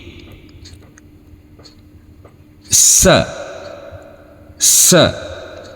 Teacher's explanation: huruf sa, ujung lidah kita bertemu dengan ujung gigi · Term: huruf sin